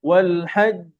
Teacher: জিমের উপরে সাদ্দা আছে, ধরে রাখতে হবে একটু।